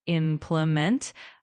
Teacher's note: in implement, make sure the emphasis is on the first syllable, implement.